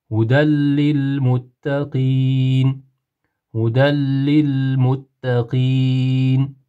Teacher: Tanvinli nunni g'unnasidom harfiga ya'ni lam harfiga kirgizib, g'unnasiz qilib o'qiymiz.